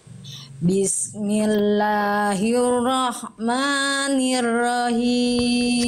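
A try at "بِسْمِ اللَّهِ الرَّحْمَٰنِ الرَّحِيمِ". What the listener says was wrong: Sekali lagi Bunda, hak kecilnya disempurnakan. Diulang, jadi hak kecil nafasnya berbisik dari tengah tenggorokan Bunda. Nah, bisikan dulu Bunda dari tengah tenggorokan.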